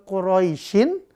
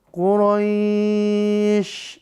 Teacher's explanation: Maka dibaca panjang roinya jadinya. Aslinya kalau dia nggak dibaca sukun, Quraisyin, karena wakaf, shinnya jadi sukun, maka roinya jadi panjang.